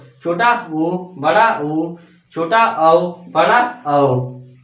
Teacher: वे वर्ण जिन्हें बोलते समय हमारे होठ कैसे हो जाते हैं गोलाकार हो जाते हैं ठीक गोलाकार हो जाते हैं वो क्या कहलाते हैं वृत्ताकार कहलाते